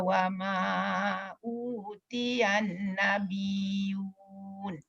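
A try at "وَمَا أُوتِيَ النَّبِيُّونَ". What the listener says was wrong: Wa ma utiyan. Dengung sikit.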